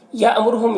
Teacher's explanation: حمزہ ساکنہ جھٹکا لگے گا، را کو پر پیش ہے، را کو پر پڑھیں گے